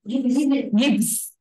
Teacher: Mà cái chữ vờ đọc nhỏ thôi, nó là âm gió thôi, cho nên là chúng ta chỉ đọc gives.